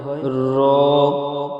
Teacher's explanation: জিবের আগার উল্টা পিঠ এবং তার বরাবর উপরের তালুর সাথে লাগিয়ে উচ্চারিত হয় র। জিবের আগার উল্টা পিঠ এবং তার বরাবর উপরে তালুর সাথে লাগিয়ে উচ্চারিত হয় র।